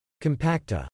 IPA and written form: kəm-ˈpak-tə (compacta)